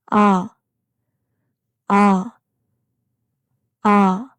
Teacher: Your mouth open vertically, a warm sound that goes straight down.